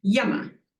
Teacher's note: When you have 2 short syllables, you put the emphasis at the beginning